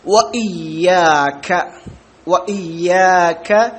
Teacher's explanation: മദ്ദിന്റെ വാവ് അല്ലാത്ത വാവ് ചുണ്ട് കൂട്ടി കൊണ്ടാണ് വാവ് പറയുക വ മദ്ദിന്റെ ആകുമ്പോൾ ചുണ്ട് കുറച്ചു വിടവ് ഉണ്ടാകും വയ്യാക്ക വയ്യാക്ക നസ്തീൻ നസ്തീൻ